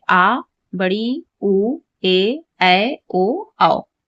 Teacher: जिनके उच्चारण में लघु स्वर से दो गुना समय लगता है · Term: दीर्घ स्वर